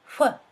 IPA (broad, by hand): ʍ